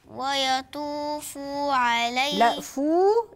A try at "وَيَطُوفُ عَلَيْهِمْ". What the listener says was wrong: حطيت واو بعد الفاء انا ما عنديش واو انا عندي الفاء مضمومه بس